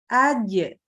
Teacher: Kemudian huruf jim punya sifat qalqalah. Qalqalah itu apa? Mantul, ya. Jadi dia terpantul di makhrajnya.